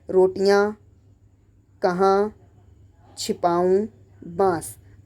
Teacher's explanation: इन शब्दों का उच्चारण नाक व मुंह दोनों से किया जाता है और इन्हें लिखने के लिए चंद्र बिंदु का प्रयोग किया जाता है। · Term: अनुनासिक